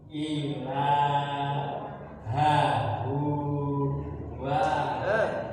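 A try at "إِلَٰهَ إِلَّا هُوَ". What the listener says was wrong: Enggak ada wa, ha lagi. Hawa gitu. Ilahahu. Ya, hunya pendek langsung berhenti. Hawahu.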